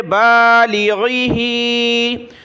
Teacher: ہا کے نیچے کھڑی زیر ہے تو یہ نیچے کی طرف ہو کھڑی زیر، تو ایک الف کی لمٹ میں نیچے کی طرف کھینچنا ہوگا، اگر اوپر ہوگی تو اوپر کھینچنا ہوگا، یہاں نیچے کھینچیں گے۔